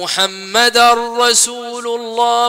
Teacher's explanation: أدخل اللي هي التنوين في الراء، إضغام تام بدون ون